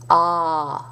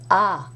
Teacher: a with accent clex was pronounced as a back a a where the tongue is down and back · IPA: [ɑ]